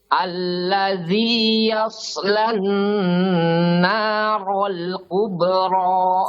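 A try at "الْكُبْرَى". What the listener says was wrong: Kube, tipis.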